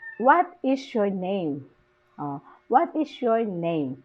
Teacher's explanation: Falling intonation in name.